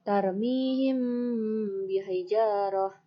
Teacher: apabila ada mim sukun bertemu dengan ba. Contohnya, tarmihim bihijarah. Maka ba-nya dibaca dengan didengungkan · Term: ikhfa syafawi